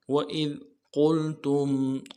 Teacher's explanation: قاف کو موٹا ادا کرنا ہے، لام کو ساتھ ملانا ہے، تا کو میم ساکن کے ساتھ ملانا ہے، میم ساکن میں غنہ کریں گے۔